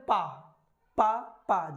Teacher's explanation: किस तरह का अवरोध होता है, देखिए जैसे हम बोले पा पा पा। जब हम पा बोल रहे हैं तो पहले तो दोनों हमारे होंठ मिलते हैं